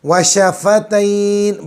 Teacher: बड़ा शीन निकालेंगे, ज़बान का बीच ऊपर का तालु